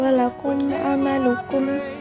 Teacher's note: Pada kalimat ada satu hukum, yaitu izhar syafawi, terjadi karena ada mim mati menghadapi huruf ain. Ketika dibaca, huruf mimnya harus jelas, tidak boleh dengung.